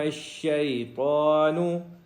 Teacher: آگے طوا توئیں والی ہے، اس کو موٹا کریں گے